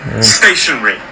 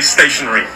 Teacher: three syllables the stress falls on the first